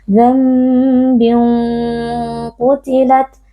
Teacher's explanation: atau ikhfanya juga ditebalkan ya Jadi kita baca dambin qutilat jadi kita angkat pangkal lidahnya supaya ikhfanya itu menjadi tebal